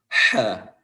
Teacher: Namun ini huruf H yang keluar dari tenggorokan bagian tengah, wasatul halq, dan itu caranya dengan menyempitkan tengah tenggorokan sehingga timbul suara yang tajam · Di sini ada huruf H yang dimana huruf tersebut keluar dari tenggorokan bagian tengah, ya, jangan disamakan dengan huruf H yang keluar dari tenggorokan bagian bawah.